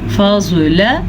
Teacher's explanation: زواد کو پر پڑھیں، لام کو لمبا نہ کریں کیونکہ لام کے اوپر ہے صرف اور صرف بڑی زبر.